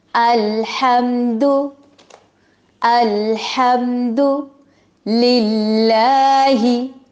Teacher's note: اللہ کے لام کو باریک پڑھیں گے کیونکہ زیر آئی ہے اس سے پہلے